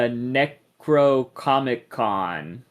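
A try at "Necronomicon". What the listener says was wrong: Uh, you just said Comic Con. It's not a Comic Con. It's Necro.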